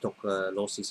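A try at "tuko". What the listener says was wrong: Yeah, toko, but no lossy. Toko.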